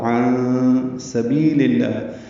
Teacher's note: پچھلی آیت میں لما تکفرون پڑھا تھا، یہاں پہ لما تصدون ہے، لما جلدی پڑھیں گے، تصدون صاد پر پڑھیں گے، دال باریک پڑھیں گے، دو واو مدہ ہے، دو حرکات لمبا کریں گے۔ عن سبیل میں نون ساکن کے بعد سین آنے کی وجہ سے اخفا ہوگا، عن سبیل اللہ، بی یا مدہ ہے، لام کی زیر کی وجہ سے لام اسم جلالہ باریک پڑھیں گے۔